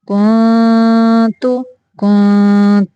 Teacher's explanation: یہاں پہ بھی اخفا کا قاعدہ ہے، آواز کو ناک سے نکالنا ہے لیکن چھپا کے، زبان کو یعنی اخفا کرتے ہوئے جو زبان کی نوک ہے اس کو تالو سے لگانا نہیں ہے، تھوڑا سا پیچھے کرنا ہے